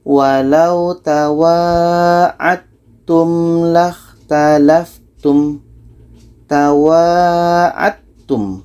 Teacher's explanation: Bunyi da sudah masuk ke ta.